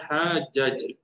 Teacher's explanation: so dia akan jadi qalqalah sughralah kecil